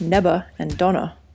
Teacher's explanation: V is also consistently replaced with B